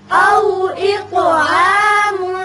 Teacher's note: یہاں طا کی صفت قلقلہ اور اس کو پر بھی پڑھیں گے